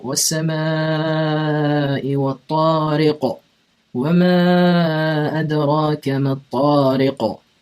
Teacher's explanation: Do you hear that qa that I'm pronouncing more echoey? That's the qalqala.